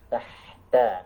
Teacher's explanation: Ta, dalam bahasa Arab ada lafaz tahta ya, tahta, maka ya jangan sampai keluar lidahnya ya, lidahnya menekan pangkal gigi seri atas, bukan keluar melampaui ujung gigi